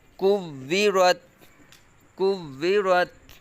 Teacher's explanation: را کو پر پڑھیں گے، تا میں آواز ختم کر دیں گے، کوّرت، کوّرت۔